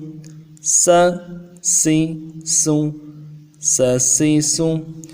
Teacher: سین زبر سا، سین زیر سی، بالکل نرمی کے ساتھ، سیٹی باریک ہوگی